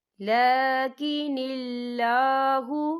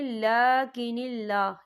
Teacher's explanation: اللہ کا نام باریک پڑھا جائے گا